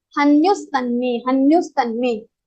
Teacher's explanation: Before visarga, you have vowel. So the visarga sound will be converted into sa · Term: visarga sandhi